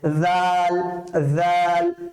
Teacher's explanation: বাতাসটা বের হবে ঠিক তেমনি ভাবে জাল নরম করে পড়বো জাল জিহ্বার আগাটা আমার দাঁতের মধ্যে লাগবে